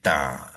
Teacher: Makhraj ta adalah hujung lidah tu kita tekan kepada belakang gigi atas untuk mengambil ta